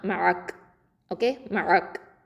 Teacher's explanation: அந்த இடத்துல நிப்பாட்டணும். காஃபுக்கு சுக்கூனை வச்சு நம்ம வக்ஃபு பண்ணணும்.